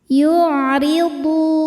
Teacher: Huruf ra dibaca tarqiq karena harokatnya di bawah kasrah, maka dibacanya tipis.